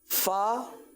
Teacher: फ ऊपर के दांत और नीचे के होठों के तर हिस्से से